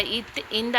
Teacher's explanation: மேல்வாய்ப்பல்லின் அடியை நாவின் நுனி பொருந்த இத்து இந்த ஆகிய எழுத்துக்கள் பிறக்கும்.